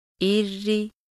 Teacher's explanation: अगर रॉ के नीचे ज़ेर हो तो रॉ बारीक पढ़ी जाती है